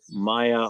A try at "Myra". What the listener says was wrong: It's Myra with a R. Myra.